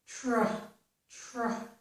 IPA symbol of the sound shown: tɹ